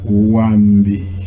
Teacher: the first A is falling and the last I is falling.